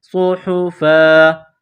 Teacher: دو زبر کی تنوین کو وقف میں الف سے تبدیل کریں گے یہاں فا کے بعد الف ہے وقف میں اس الف کو